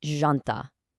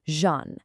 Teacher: Now, the absolutely crucial point here is that starting J sound. It is definitely not a hard jumping J like you'd hear in the English word jump. It's incredibly soft. Actually, think of it much more like the S sound right in the middle of the English word measure.